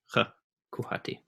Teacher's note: In Bosnian and Croatian, you would say kuhati. With the h is a velar fricative rather than the glottal fricative that we know for h